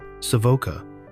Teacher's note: with stress on the first syllable